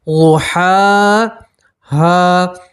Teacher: ضحا، ہا پہلے بڑی ہا ہے اس کے بعد چھوٹی ہا ہے، ٹھیک ہے. تو آپ بڑی ہا کے اوپر کھڑا زبر ہے تو اس میں آپ ایک الف کے برابر کھینچیں گے